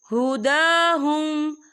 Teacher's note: ہدا کھڑی حرکات ہے تو ہم اسے 2 یا 3 حرکت کے برابر کھینچے پڑھیں گے